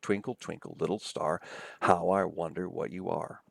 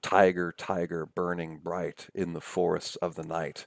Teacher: written in trochees, pairs of syllables, right, where the stress falls on the leftmost syllable or the first syllable, and there are 4 of them per line, so trochaic tetrameter.